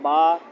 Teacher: آگے با، دونوں ہونٹوں کے اندرونی طری حصہ کو آپس میں سختی سے ملا کر پڑھنا، یہی مخرج ہے اس کا۔ اس میں 1 الف کے برابر مد اصلی ہوگی، یعنی 1 الف کے برابر لمبا کریں گے۔